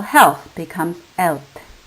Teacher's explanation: Initial consonant is dropped with h.